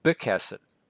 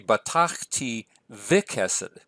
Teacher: It should be vikesed. I'm very used to reading a hard B at the beginning of a word, but technically that should be vikesed with a V sound